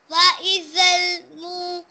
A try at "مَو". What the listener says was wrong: میم زبر واو ماؤ، واو لی نہیں یہ.